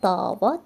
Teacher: Burada artıq A-da uzanma olacaq